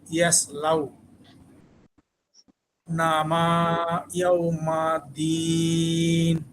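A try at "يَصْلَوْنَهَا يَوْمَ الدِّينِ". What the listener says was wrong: হ্যাঁ এটা হলো মিম না, এটা হলো হা। ইসলাও না হা।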